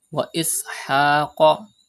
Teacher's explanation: pronounce qaf with thicker voice because qaf is from mustaliya letters